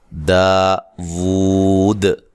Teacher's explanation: داود، دا الف مدہ ہے، واو کے اوپر الٹا پیش ہے، واو کو ایک الف کے برابر لمبا کرنا ہے اور وقف کی صورت میں مد کر سکتے ہیں.